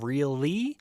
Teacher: as you're saying really, your tongue slides forward for the L